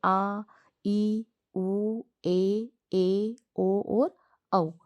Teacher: इनके उच्चारण में ह्रस्व स्वर की तुलना में दुगना समय लगता है। मतलब ह्रस्व स्वर को जब हम बोलते हैं तो हमें थोड़ा कम समय लगता है। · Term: दीर्घ स्वर